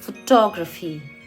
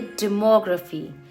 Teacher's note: stress last में graphy पे नहीं बल्कि उससे पहले वाले syllable पे होता है।